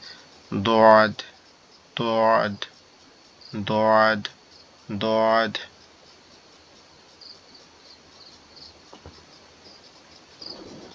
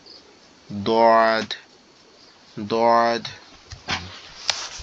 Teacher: দোয়াদের উচ্চারণের ক্ষেত্রে আমাদের জিহ্বার গোড়া, 2 দাঁতের গোড়া, অর্থাৎ আমাদের জিহ্বার গোড়াটা 2 সাইডের উপরের দাঁতের গোড়ার সঙ্গে লাগবে, হয় এই সাইড না হলে ও সাইড, কোন এক সাইড